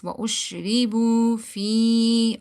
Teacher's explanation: now ya is silent, before that there is kasra, so we need to stretch it. Fi, not fi.